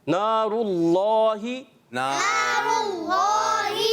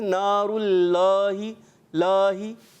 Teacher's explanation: اللہ کے نام کو پر کرنا ہے, یعنی موٹا کر کے پڑھنا ہے